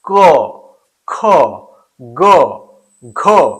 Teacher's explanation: क वर्ग का उच्चारण जब हम करते हैं तो यहां पर देखेंगे हम लोग कि इसका उच्चारण कंठ से होता है।